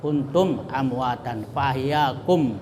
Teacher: Nah, ini kalau ada huruf mim mati atau sukun berbaris sukun ketemu dengan huruf hijaiyah selain huruf mim dan ba, nah, maka itu izhar syafawi. Jadi cara membacanya itu tetap terang mimnya, ya, dan jelas di bibir serta mulut tertutup.